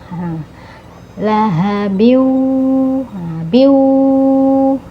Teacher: ini ha besar ya makhrajnya keluar dari tenggorokan e paling bawah